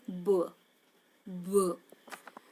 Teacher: while you are pronouncing the sound b, b, what you realize that there is some vibration in that sound. You can pronounce that sound, you can understand that how to pronounce and what is the vibration in that sound, so that you can understand this is the voiced sound.